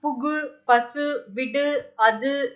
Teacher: தனிக்குறில் எழுத்தை அடுத்து வரும் வல்லின உகரங்கள் வந்து ஒரு மாத்திரை அளவுக்கு முழுமையா ஒலிக்கும் அப்படிங்கிறது ஒரு ஸ்டேட்மெண்ட். அதே மாதிரி ஓசையே குறையாம ஒரு மாத்திரை அளவுல முழுமையா ஒலிக்கிறத வந்து முற்றியலுகரம் அப்படின்னு சொல்றோம்